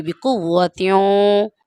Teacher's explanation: یہاں پر واو کے ساتھ آپ نے ملایا ہے تو ناک میں آواز محسوس ہوگی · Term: ادغام